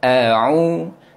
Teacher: Sebut huruf hamzah dulu baru huruf ain. Yang mana makhraj huruf hamzah di bahagian rongga kerongkong bahagian bawah sekali, dan makhraj huruf ain di bahagian rongga kerongkong bahagian tengah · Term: huruf hamzah dan huruf ain